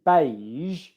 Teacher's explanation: it's just like the sh sound, but it's voiced. There's voicing in the throat. And you might also feel voicing in your tongue.